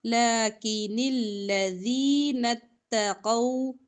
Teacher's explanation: لام کے اوپر کھڑی زبر لمبا کریں گے ، باقی حروف لمبے نہیں کریں گے، لیکن الذین اتقوا، قاف